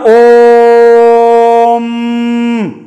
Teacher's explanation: ऊ जो है देर तक जाएगा, तीन मात्रा का समय लेगा और उससे भी अधिक मात्रा का समय लेगा, इसीलिए ओ लिख के और ऊ लिख के ऐसे ऐसे ऐसे ऐसे करते रहे और म यहां कर देते हैं तो ओम हो जाता है। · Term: प्लुप्त स्वर